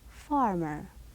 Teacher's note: The far is louder than the ER.